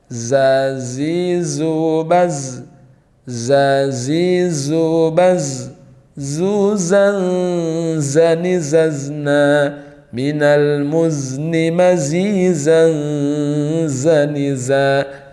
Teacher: Artinya huruf zai ketika dilafalkan tidak ada nafas yang keluar. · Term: suara desir